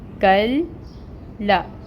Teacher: 2 لام چھپے ہوئے ہیں، ایک لام ساکن ہے اور ایک لام فتحہ کی حرکت کے ساتھ ہے۔ تو کاف کو جب ہم لام کے ساتھ ٹائٹلی جوائن کریں گے تو پڑھیں گے کل لا۔ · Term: تشدید